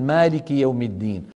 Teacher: شايف اللسان لما تنطق ألف مجردة مثل مالك يوم الدين، ما شايف اللسان في وضع الراحة والفم مفتوح